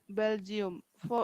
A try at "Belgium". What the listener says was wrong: Giam, not yum. Giam. Belgium.